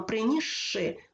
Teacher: принісши у слові принісши спочатку є с свистячий потім ши- шиплячий у вимові с ніби перестає існувати він перетворюється на Ш і ми Таким чином вимовляємо принісши тобто ш подовжений звук у